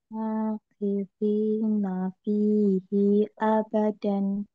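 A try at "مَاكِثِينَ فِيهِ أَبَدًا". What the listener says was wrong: I-nya kepanjangan, coba lagi.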